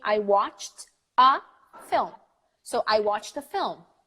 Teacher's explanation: you hear the T. Because the T is followed by an A.